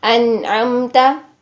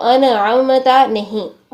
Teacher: نون کو بھی ساکن حالت میں ہلائیں گے نہیں، قلقلہ نہیں کرنا ہے